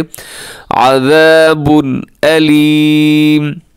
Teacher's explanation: तनवीन के बाद हमज़ा आगे जो कि हरूफ हलकी में से है, तो यहाँ इजहार करें, तेज़ी से पढ़ दें। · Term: इजहार हलकी